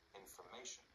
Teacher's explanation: And in information, the syllables before and after the stressed syllable reduce to schwas.